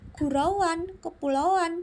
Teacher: hubungan fonem-fonem itu timbul lagi bunyi W atau Y antara u a dan antara i a